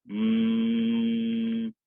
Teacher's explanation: the air being driven up through your throat out through your nasal cavity to create a vibration sound